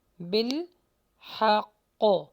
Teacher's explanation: قاف کو ہیوی کیجئے اور سٹاپ کر کے جما کے لگائیے